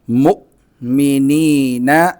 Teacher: حمزہ پر جب بھی جزم ہو تو اس کو نکالنے میں آواز اور سانس دونوں بند ہونی چاہیے، تھوڑا سا جھٹکا لگے گا۔ مؤمنین، اور جب اسٹاپ کریں گے تو سیکنڈ لاسٹ نمبر پر یا ہے تو اس پر مد کرنی ہے۔